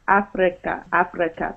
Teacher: You're rolling your R's.